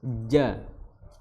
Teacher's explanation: makhrajnya adalah di tengah lidah bertemu dengan langit-langit atas